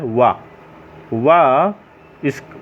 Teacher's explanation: दंत माने दांत और ओष्ठ, दांत और ओष्ठ इन दोनों की सहायता से वा का उच्चारण स्थान किया जाता है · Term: दंत ओष्ठ